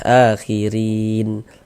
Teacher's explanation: Huruf ro kalau dia memiliki harokat kasroh ya, baris 1 di bawah huruf harokat kasroh, maka huruf ro dibaca tipis, dibaca tarkik. Tipiskan huruf ro-nya.